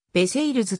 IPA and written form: ˈvərseilz (Versailles)